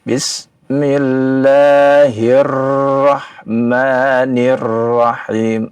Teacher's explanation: Ra-nya terlalu banyak getar ya. Nah, itu jangan dilakukan karena memang sifatnya dia takrir, bergetar ya.